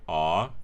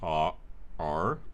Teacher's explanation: When we use a retroflex R, it lowers the frequency of the third formant